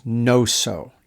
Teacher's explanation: Probably you barely even have the G sound at the beginning. It's probably mostly just kind of what you'd get if you had an NG sound, no, like the end of sing.